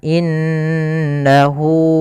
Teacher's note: pada lafal inna ada bacaan gunnah, yaitu cara membacanya an-nya ditahan